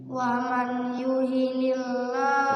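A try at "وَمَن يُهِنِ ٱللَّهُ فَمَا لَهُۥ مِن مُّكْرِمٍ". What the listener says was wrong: wa may idgham dong wa may kurang. Sekali lagi wa may tahan dulu idgham bi gunnah itu.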